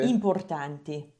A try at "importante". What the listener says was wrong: Importante. A me sembra che tu dica quasi tante. A me sembra quasi che la tua A sia quasi Sì, un po' nasale e un po' quasi come in inglese, come importante. Tante.